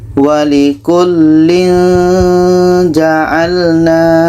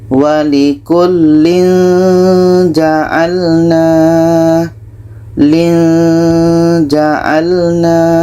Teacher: yang tanwinnya ini dalam surah Annisa ayat 33 ini tanwin bertemuja ikhfa Hakiki harus kita baca samar dan dengung